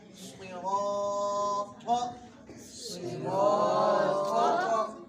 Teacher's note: میں ہے، اور اس میں یہ تینوں حرف موٹے ہو گئے، صاد اور طا حروف مستعلیہ یعنی موٹے حروف ہیں، را پر زبر یا پیش ہو تو را موٹی ہوتی ہے ، تو اس لیے یہ را بھی موٹی ہے۔ صراط، صراط،